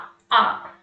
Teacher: विवृत स्वर क्या है इसमें मुंह अधिक खुला रहता है जैसे बड़ा आ